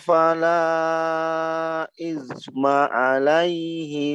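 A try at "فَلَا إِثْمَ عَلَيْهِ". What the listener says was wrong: Coba diulang, samakan di kalimat isma seperti yang di atas, di isma di atas ya. Alirkan dia, isma, jangan isma, jangan gitu ya, alirkan karena dia juga ada sifat rakha ya. Jangan izma, jangan dirubah saya.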